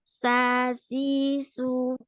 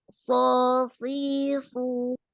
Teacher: Cuma bedanya pada so itu pangkal lidahnya naik. Kemudian ada kepungan suaranya. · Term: sod